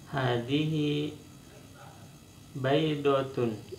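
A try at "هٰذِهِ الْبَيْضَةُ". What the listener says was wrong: Hadhil yang jelas lamnya. Hadhil baydatu.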